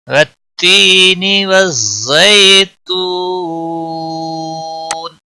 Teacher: والزی، زا کو تھوڑا سختی کے ساتھ ادا کریں گے، اس کے اوپر تشدید بھی ہے۔ زی یالین ہے، تھوڑا نرمی کے ساتھ کھینچ کر ادا کریں گے۔ تو واو مدہ ہے، 1 الف کے برابر کھینچ کر پڑھیں گے۔ · والتی یا مدہ ہے، 1 الف کے برابر کھینچ کر پڑھیں گے